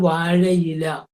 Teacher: ആയിക്കും ഈക്കും ഇടയ്ക്ക് യാ വന്നു